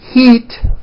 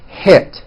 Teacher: Think of the sound E as in heat as being high up, and I as in hit as being a little bit lower. One hint I could give you is when you're practicing, raise your eyebrows with E words like this, heat, and then lower your eyebrows and don't smile so much with I words like hit.